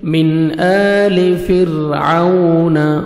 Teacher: واولین ہے، لپس کو راؤنڈ میں لے کے جائیں گے